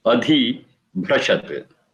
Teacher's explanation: Adhi, dha also is mahaprana.